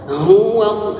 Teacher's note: ha dengan mengeluarkan dari tenggorokan yang paling jauh